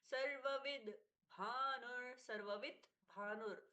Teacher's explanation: त का परिवर्तन द में अब ये जो द है ये आधा ही है। · अब ये जो द है ये आधा ही है। सर्ववि भानुर जब हम बोलते हैं तो स्पष्टता से द नहीं सुनाई देना चाहिए। · दोनों ही वकार अलग अलग से उच्चारित होंगे